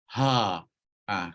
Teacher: bila kita sebut huruf ha, maka pita suara kita akan buka luas sikit. Sebab apa? Sebab huruf ha ni dia diiringi dengan udara. Ada angin. Ha.